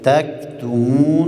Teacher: حرف کاف از حروف شدت است صدا را قطع میکنیم همس را میاریم